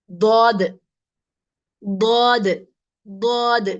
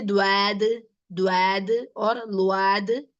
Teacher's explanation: The sides of the tongue. The side of the tongue will be touching the upper molars.